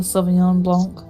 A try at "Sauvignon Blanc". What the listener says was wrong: No, Sauvignon Blanc. You don't say the last letter.